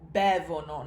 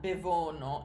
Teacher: in the third person plural form, in the loro form, that ono ending is unstressed